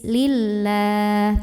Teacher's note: Hai Lila lamjalalah nya dibunyikan secara Taro klik Kenapa tarqiq karena huruf sebelumnya yang lam barisnya kasrah jadi bacanya tipis